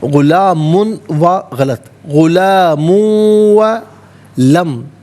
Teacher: غلام، لام کھڑا زبر لا اور لام الف زبر لا دونوں طریقوں سے پڑھنا درست ہے۔ غلام وا، غلام میں میم پر 2 پیش کی تنوین ہے، اسے واو کے ساتھ ملا کر واو کی آواز کو ادا کیا جائے گا۔ یرملون کا قاعدہ یہاں پر اپلائی ہوگا۔